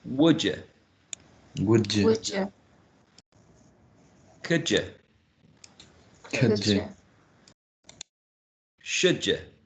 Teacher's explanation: we still have a change from a full vowel sound u, a long u, to schwa, which is shorter, which is lax, right? Central, mid-central. · we also have assimilation here, present in the combination of d and y, in all of them.